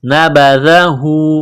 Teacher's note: دال کو باریک کرنا ہے زبان تھوڑی سی باہر نکالیں گے دال کو پڑھتے وقت